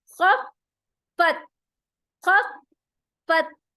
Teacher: फा के ऊपर शद आ रहा है, तो उसको हम सख्ती के साथ डबल टाइम प्रोनाउंस करेंगे